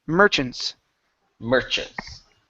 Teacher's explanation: the stress is at the very beginning Merchants Merchants uh Merchants make sure to pronounce the N Merchants